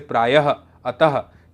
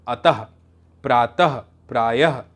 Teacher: विसर्ग, ये दो बिंदियाँ, इसका उच्चारण स्वर के ठीक बाद ह जैसा होता है, जैसे प्रायः, अतः।